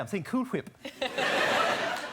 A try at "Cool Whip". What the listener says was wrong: You're putting a lot of emphasis on the H.